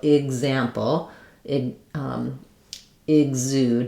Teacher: If letters EX are followed by a vowel sound, like in example, exude, etc., it will have the voiced sounds for letter X. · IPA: /ɪgz/